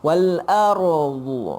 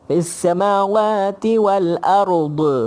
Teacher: lidah kita bila sebut dha tu dia ada di tepi, kemudian pelan-pelan dia pergi ke depan. Wal ardu, dia pergi ke depan tu barulah selesai huruf dha. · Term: istitalah